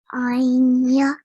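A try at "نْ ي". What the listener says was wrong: Well done. You picked up the nasal sound really, really well. So it's a really soft nasal sound.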